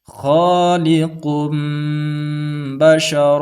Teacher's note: tanwin dan Nun ini kita hilangkan dan berubah menjadi suara huruf mim mati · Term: iqlab